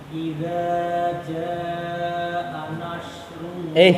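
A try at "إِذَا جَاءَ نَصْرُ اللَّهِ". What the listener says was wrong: Kok Anash? So-nya di mana? Ujung lidahnya di gigi seri bawah. Anas. Jangan Anash, ya. Ujung lidahnya turun ke bawah. Anas. So. Jangan syok. So. Anas. Anas. Jangan Anash. Kalau Anash syaknya naik itu, ya. Ujung lidahnya turun ke gigi seri bawah. Sozasa.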